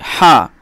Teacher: এই হা এর যে উচ্চারণ এটা গলার মধ্যখান থেকে বের হয় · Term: বড় হা